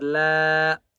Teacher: لام کے اوپر بڑی مد ہے اس لیے 5 الف کی مقدار کھینچ کر پڑھیں گے